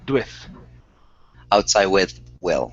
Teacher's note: it's a very quick d into an ooh